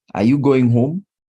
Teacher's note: I am expecting to give a yes or no answer. So rising intonation